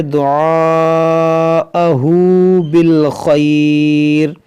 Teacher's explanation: یہاں پر جو مد ہے یہ مد متصل ہے، اس کو 3 4 الف کے برابر کھینچ کر پڑھیں گے۔ ہاں پر الٹا پیش ہے، اس کو بھی تھوڑا سا کھینچیں گے، جیسے دعاءہ بالخیر، یہاں پر وقف مطلق ہے، رکیں گے ہم، تو یہاں پر مد لین عارض ہوگا، کیونکہ حروف لین کے بعد را پر عارضی سکون آ رہا ہے رکنے کی وجہ سے۔